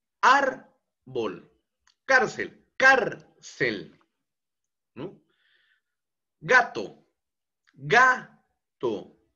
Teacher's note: la penúltima sílaba es la que lleva mayor entonación de voz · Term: palabras graves